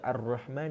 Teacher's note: perkataan Ar-Rahman ni tidak dibaca sebagai Al-Rahman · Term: alif lam syamsiah